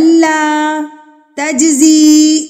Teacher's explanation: جیم پہ جیم ساکن ہے تو یہاں پر ہم اس کو قلقلہ کریں گے